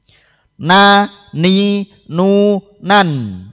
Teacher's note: ujung lidah mengenai gusi gigi depan atas menjadi makhrajnya huruf nun